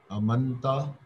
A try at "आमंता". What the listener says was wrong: आमंता खड़ी जबर की आवाज